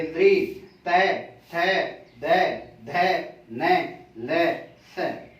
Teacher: इनका उच्चारण स्थान क्या हो जाएगा, दंता। अर्थात जब इन वर्णों को अपन बोलेंगे तब हमारी जिह्वा जो है वो दांतों से स्पर्श करती है। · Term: दंतव्य